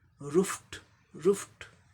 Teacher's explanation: अब इसका उच्चारण क्या हो जाएगा, पहले ये मेन वर्ब का उच्चारण देख ले, आर का र हो गया, ओ का ऊ, लॉन्ग ऊ, दीर्घ ऊ जिसे कहते हैं, ऊ लॉन्ग ऊ, रू, एफ का फ हो गया, फ वॉइसलेस साउंड है, इसलिए ईडी का उच्चारण, ईडी पास्ट पार्टिसिपल इन्फ्लेक्शन का उच्चारण ट हो जाएगा